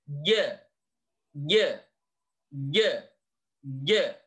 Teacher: keluarnya adalah dari tengah lidah jadi posisinya bukan di ujung lidah tetapi posisi Tengah liddat diangkat atas ke langit-langit sehingga akan berbunyi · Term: huruf Jim, huruf jim